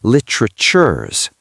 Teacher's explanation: The is almost disappears. It just becomes a z sound attached to the word before it. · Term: contraction